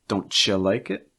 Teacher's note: in these cases those t u sounds are going to sound like cha